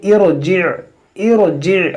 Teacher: را ساکن سے پہلے عارضی زیر ہے تو یہاں پر اس را کو موٹا پڑھیں گے